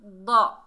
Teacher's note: दौद हुरूफ इस्ताला में से है, मोटा अदा होगा